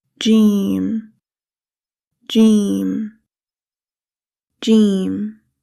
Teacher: The articulation of jeem is the middle of the tongue touches the middle of the roof of the mouth.